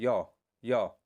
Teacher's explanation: आगे हाथ लगाइए, आपके मुख के आगे हाथ ले जाइए, हथेली को ले जाइए, और जब आप य बोलेंगे तो आपके हाथ पे वायु का दबाव नहीं पड़ेगा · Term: अंतस्थ वर्ण